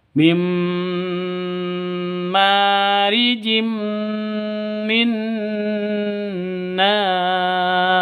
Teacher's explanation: ma panjang dua ketukan karena ada alif diawali dengan fathah. Mim marijim, tanwin bertemu dengan mim. · Bukan min tapi langsung mingkem. Mim langsung masuk ke mim disertai dengung dua ketukan. Karena idgham bi gunnah.